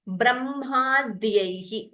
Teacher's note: Ba is Alpa Prana only.